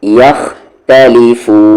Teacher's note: فو کو کھینچتے ہوئے نون میں ملا دیں گے. مد عارض ہے جسے آپ ٹیمپرری مد کہتے ہیں.